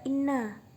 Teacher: Hukum tajwid di atas adalah guna. Sebab ada nun ditasydid. Ketika dibaca huruf nunnya harus didengungkan.